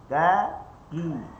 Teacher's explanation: Kalau kita letak tangan kat depan, kita akan rasa ki sikit angin langgar jari kita · Huruf kaf memang ada angin tapi tidaklah angin sekuat yang kita baca. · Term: hams